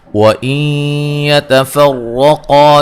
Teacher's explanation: یہاں نون ساکن کا ادغام مع الغنہ ہے